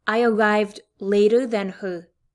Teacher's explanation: you hear that d sound in here in the word later